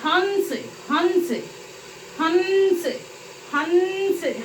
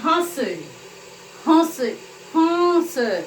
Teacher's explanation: अनुनासिक, जो ध्वनि नाक और मुंह दोनों से निकले